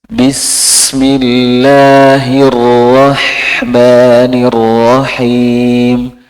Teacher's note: Huruf sin itu mengalir. Nanti kalau hurufnya sukun itu diseret ya Pak.